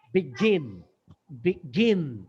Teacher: it's a gla sound, আমি ওখানে pressure দিচ্ছি। এই দেখো প্রথমটা হচ্ছে আনস্ট্রেসড, বি আনস্ট্রেস, আমি কিন্তু স্ট্রেস দিচ্ছি না, গিন স্ট্রেস দিচ্ছি। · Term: আনস্ট্রেসড এন্ড স্ট্রেসড